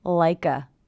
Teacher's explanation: Also, again here we have ending consonant sound, beginning vowel sound, like a. I hear the K linking to the schwa